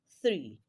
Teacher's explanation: three is a voiceless dental fricative · it is pronounced as your tongue in between your upper and lower front teeth. So when you pronounce that word, it has to sound like the sound that is prevalent therein, and that is voiceless dental fricative.